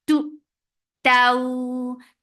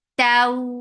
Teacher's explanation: Ta is very sharp here. For fatha open jaws attached with waw, and then make it soft and make it 2 counts long.